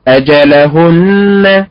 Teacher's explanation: النبر على حركه الهاء النبر على حركه الهاء